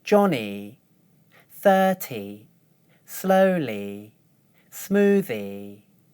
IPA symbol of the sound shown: i